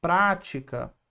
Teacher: Prática, a sílaba tônica é antepenúltima. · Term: proparoxítona